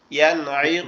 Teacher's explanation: তারপরটা হচ্ছে ইয়ানঈকু, ইয়ানঈকু, এখানে নুন সাকিন আছে, তার পাশে আইন আছে যেটা ইজহারের হরফ, তা এজন্য এটা স্পষ্ট হবে